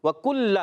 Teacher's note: کاف باریک رکھنا ہے، کاف پر پیش ہے. وَكُلَّ لام مشدد ذرا رک کر ادا کریں گے